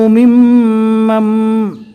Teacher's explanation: بیچ میں نون کو چھوڑ دینا ہے۔ جزم والے حرف کے بعد تشدید والا حرف آیا تو جزم والے حرف کو چھوڑ دیں گے۔